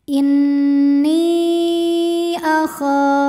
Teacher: Maka nun dipanjangkan boleh 4 boleh 5 harokat. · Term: mad jaiz munfasil